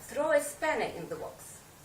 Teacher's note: you put the stress on spanner